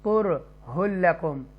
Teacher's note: कुर यहाँ तफ़कीम के साथ रा को पढ़ेंगे